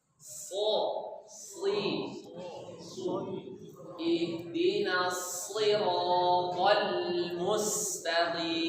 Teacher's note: Huruf shad itu pinggir lidah kita itu pinggirnya ini melimpung dia ke atas, nempel ke langit.